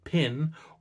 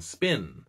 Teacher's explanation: in English a P can be pronounced with a lot of air, as in pin, or with very little air, as in spin. But English speakers still consider them both to be the same P.